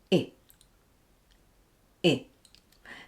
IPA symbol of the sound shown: ɪ